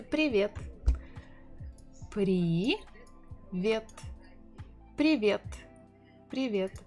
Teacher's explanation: the correct way is to say привет with stressing the second syllable